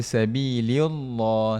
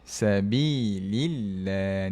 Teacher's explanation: Sebab apa? Sebab lam ini sebelum kalimah Allah berbaris bawah. Kita baca dengan nipis. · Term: tarqiq